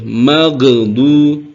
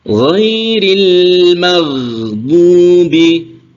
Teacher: ini huruf ghain, ini bukan huruf qalqalah ya, tidak boleh memantul juga. Ghain ini mengalir.